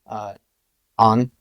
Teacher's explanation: then you have a nasal sound, on, and then you have a long nasal sound, on